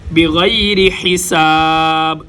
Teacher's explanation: ان اللہ یرزق من یشاء بغیر حساب، غین اور خا گلے کے اوپر والے حصے سے ادا ہوتے ہیں۔ بغیر، را کے نیچے زیر ہے، را باریک، بغیر حساب، سین سیٹی جیسی آواز، ہا گلے کے درمیان سے، با کے اوپر ہم قلقلہ کریں گے، جہاں پر وقف ہوگا آخری حرف کو ہم ساکن کر دیں گے۔